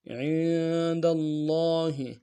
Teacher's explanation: گے۔ اقسط عند اللہ، عین کو نون کے ساتھ ملانا ہے، عین کو گہرائی سے ادا کریں گے، نون ساکن غنہ کریں گے ، دال کو لفظ اللہ کے لام کے ساتھ ملانا ہے،